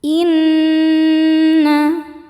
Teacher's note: Sebab nun bertasydid. Cara bacanya dengungkan tahan dengungannya kurang lebih dua harakat. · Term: nun musyaddadah, gunnah musyaddadah